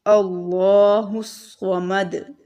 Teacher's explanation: एंड वाले हर्फ के ऊपर जब पेश है तो उसको साकिन कर देंगे। ठीक है, और फिर हम इस पर कलकला करेंगे, अल्लाहुस्समद। · जब हम वक्फ करेंगे तब कलकला होगा, दाल के ऊपर जब जज़म आ जाएगी